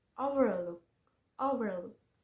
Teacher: Three syllable word with stress on the third syllable are overlook